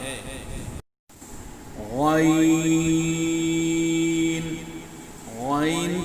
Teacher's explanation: غین کا مخرج ابتدائے حلق، یعنی حلق کا شروع حصہ، حلق کے شروع حصے سے غین ادا ہوتا ہے۔